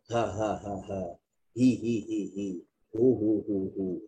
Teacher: ha simpul adalah huruf yang 70% suara, 30% angin